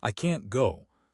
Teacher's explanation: Negative can't, we stress it. The vowel is strong slash knt slash.